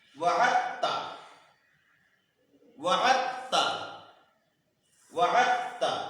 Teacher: الذی وعدت، دال ساکن کے بعد تا آیا ہے، دال اور تا کا مخرج ایک ہے، اس لیے دال کو تا میں ادغام کر کے پڑھا جائے گا، ادغام متجانسین ہوا۔